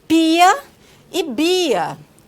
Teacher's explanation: P e B são oclusivas bilabiais, como pia e bia, que recebem essa descrição por serem produzidas com oclusão total dos lábios